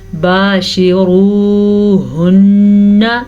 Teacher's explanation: نون پہ شد کی وجہ سے نون غنے کے ساتھ پڑھی جائے گی